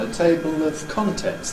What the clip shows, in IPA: ˈteɪbl